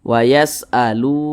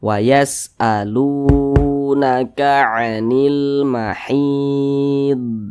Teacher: huruf tersebut baca panjang Makanya lu dibaca panjang mad thi'i wa'alu mad thii panjangnya itu dua harakat dua harakat itu untuk lebih mempermudah kita dalam belajar kira-kira temponya